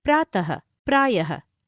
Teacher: विसर्ग का उच्चारण ह की तरह होता है